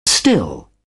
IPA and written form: stɪl (still)